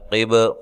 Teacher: نون کو واضح کرنا ہے، دونوں کو الگ الگ کرنا ہے، قب قاف کو موٹا با پہ قلقلہ